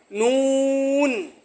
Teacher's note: জিহ্বার আগা তার বরাবর উপরের তালুর সঙ্গে লাগাইয়া উচ্চারিত হয় নুন